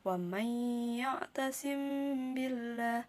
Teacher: Ikhfa syafawi adalah apabila mim sukun bertemu dengan huruf ba, dan yang dinamakan dengan syafawi juga karena makhraj mim dari syafah ataupun bibir. Ketika menghadap ba, mim sukun dilafalkan samar menjadi gunnah dan ditahan 2 harokat. Dan gunnah artinya dengung atau suara dari hidung.